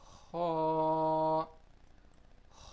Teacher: Ha is pronounced from the upper part of our throat.